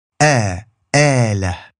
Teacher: It looks like an alif with a squiggly line on top. And phonetically, it's just a glottal stop with a long a afterwards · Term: Alif Al-Mad